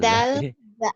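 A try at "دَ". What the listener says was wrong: Bukan dal. Dal kalau belum berbaris dal. Sudah berbaris jadi da. Da.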